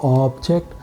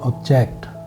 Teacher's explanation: So object, you've seen, stretch on the first syllable, it's a noun. Stretch on the second syllable, it's a verb.